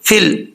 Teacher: فا کو جب لام سے ملائیں گے بیچ میں یا جو ہے وہ چھوڑ دیں گے